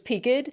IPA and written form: pikt (peaked)